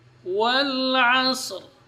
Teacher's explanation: huruf waw keluar dari dua bibir.